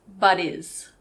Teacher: I didn't pronounce the H I actually said buddies but is one more time he's a